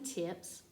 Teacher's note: if suffix s follows an unvoiced consonant the S is unvoiced as in tips